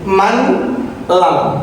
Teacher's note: Nanti bunyi nun mati atau tanwin yang dimasukkan ini sempurna hilang berganti huruf menjadi lam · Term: idgham kamil